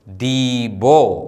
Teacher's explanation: ആദ്യത്തെ അക്ഷരം ദോലാദ്, സ്വരം ഈക്ക് ശേഷം യൂദ്. ഈ എന്ന സ്വരത്തിന് ശേഷമുള്ള യൂദ് ഉച്ചരിക്കുന്നില്ല.